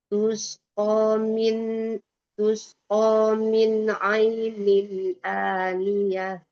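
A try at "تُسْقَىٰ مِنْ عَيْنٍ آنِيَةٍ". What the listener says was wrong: Iya itu berarti suaranya belum keluar. Tapi kalau makhrajnya kan udah bener ya gitu.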